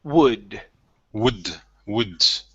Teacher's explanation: Instead of wold, the L is silent. We don't pronounce that.